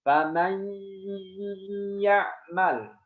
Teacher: Harus suara dengung dari hidung karena namanya bi gunnah. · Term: idgham bi gunnah